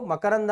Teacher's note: ಅನುನಾಸಿಕದ ಭಾಗವಾಗಿ ನಕಾರದ ಧ್ವನಿಯಲ್ಲಿ ಉಚ್ಚಾರವಾಗುತ್ತೆ